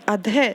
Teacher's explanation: ध के बाद ह की साउंड आई क्योंकि यहाँ पर विसर्ग लगा हुआ है